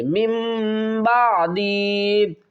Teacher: جب بھی نون ساکن کے بعد با آئے گا تو ہم نون کی آواز کو میم کی آواز میں بدل کر پڑھیں گے